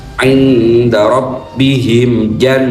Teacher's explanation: nun tasjid ghunnah tiga ketukan dengungnya